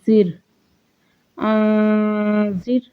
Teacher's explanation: را ساکن سے پہلے زیر ہے تو را کو باریک پڑھا جائے گا